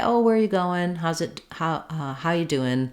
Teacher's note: we do sometimes use a word like goin' or doin' in casual speech in American English